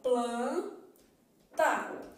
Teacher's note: eu faço o p porque eu vou fechar a boca eu faço ele porque eu coloco a língua atrás do dente faço a só que é nasal · para a palavra planta eu já tenho um cenário diferente porque esse n que tá aparecendo em planta ele não é pronunciado ele apenas indica que a vogal é nasal